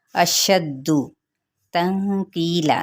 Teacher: نون پہ اخفاء حقیقی، کی پہ یا مدہ اور لا پہ کیا ہے وقف بالابدال